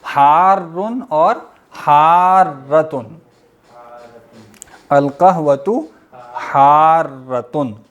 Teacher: را پہ تھوڑا سا رکیں گے، شد ہے نا